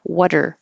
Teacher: So we don't usually make a contraction water, but water, water. The T changes to a D.